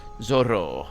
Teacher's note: so it would have that rolling R and it also would have the sort of open o at the end